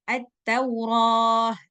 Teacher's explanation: At-Tauratu tu dengan tamar butoh. Nah, ketika berhenti di kalimat at-Taurah, maka malaikat Jibril mengganti huruf ta dengan huruf ha.